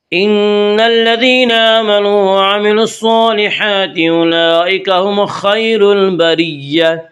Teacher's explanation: ان نون مشدد غنہ ہوگا، غنہ کی مقدار 1 الف ہے۔ ان الذین یا مدہ وہ یا جو ساکن ہو اور اس سے پہلے زیر ہو، یا مدہ کو 1 الف کے برابر کھینچ کر پڑھیں گے۔